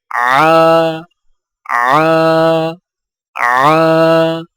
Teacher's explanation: عین کی آواز حلق سے رگڑ کھاتی نکلتی ہے